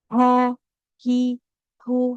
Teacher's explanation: ada huruf ha yang mana makhrajnya di tenggorokan paling bawah.